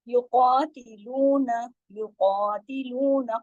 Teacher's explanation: قاف موٹا پڑھا جائے گا، 2 حرکات کھینچے گا۔ باقی تمام باریک حروف ہیں۔